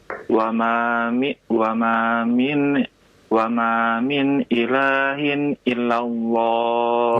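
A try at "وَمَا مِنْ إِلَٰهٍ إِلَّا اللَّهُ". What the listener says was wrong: Illallah tasydid.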